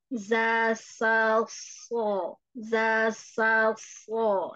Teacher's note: Jadi huruf-huruf ini semua ujung lidahnya ke bawah.